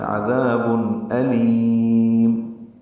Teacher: میم ساکن پہ اظہار شفوی ہوگا، ہونٹ بند کر لیں گے، قلقلہ نہ ہو، یاد رہے. علیم یہ کہنا غلط ہے، عذاب علیم. · آخر میں ہونٹ بند ہوں گے، لام لمبا ہوگا، مد عارض السکون ہوگا